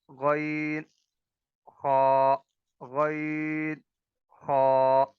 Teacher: یہ دونوں حروف جو ہیں ادنا حلق یعنی گلے کے ابتدائی حصے سے ان کی ادائیگی ہوتی